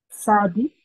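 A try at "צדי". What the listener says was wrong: Tadi, yeah. Make the T very distinct. Tadi. Ta. I must hear the tadi.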